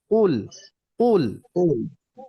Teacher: কফ হয় গলার নিচে অর্থাৎ জিহ্বার গোড়া থেকে, আর উচ্চারণটা হবে ভারী আওয়াজ। হ্যাঁ, ভারী আওয়াজ হয়, তার জন্য আওয়াজটা হবে উল উল।